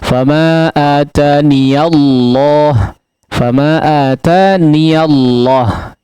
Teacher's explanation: Adapun ketika diwasal dalam riwayat Hafs an Asim, ya, khususnya di riwayat Hafs an Asim, ya. Ketika diwasal maka huruf ya-nya betul-betul berharakat fathah, ya, hidup.